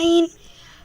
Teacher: आइन, आइन यहाँ से निकालते हैं, ये जो हड्डी है ना, हलक के नीचे से, हड्डी से, हड्डी वाली जगह से निकालते हैं आइन